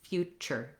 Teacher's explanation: our letter T, with this TU, says the ch sound